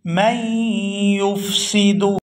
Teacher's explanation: میم کو یا مشدد کے ساتھ ملائیں گے تو غنہ کریں گے